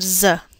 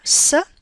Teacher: sounds s and Z while touching your fingertips to your throat you should be able to feel your throat vibrating when you say the Z but no vibration when you say the S